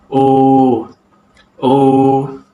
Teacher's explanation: belakang lidah dinaikkan separuh tinggi ke arah velum. Kemudian velum dan juga uvula dinaikkan menutup rongga hidung supaya udara tidak dapat keluar melalui rongga hidung. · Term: vokal belakang separuh sempit